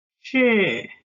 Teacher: If we see this stroke down diacritic, our voice should go down. It's like the Chinese character 是, which means yes or be verbs in English. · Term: fourth tone